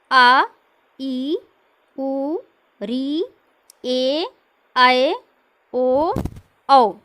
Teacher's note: अब दीर्घ में जिस स्वर के उच्चारण में 2 मात्रा का समय लगे उसे दीर्घ कहते हैं।